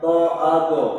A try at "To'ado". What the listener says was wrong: Iya, sahih. To'ado. Sahih. Barakallahu fik.